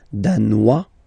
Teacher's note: Danois, don't pronounce the final S.